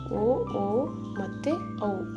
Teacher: ಈ ಅಕ್ಷರಗಳು ಕಂಠ ಮತ್ತು ತುಟಿಗಳೆರಡ ಸಹಾಯದಿಂದ ಹುಟ್ಟುತ್ತವೆ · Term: ಕಂಟೋಸ್ಟ್ ವರ್ಣಗಳು